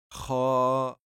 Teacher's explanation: le kha, lui, sort du haut de la gorge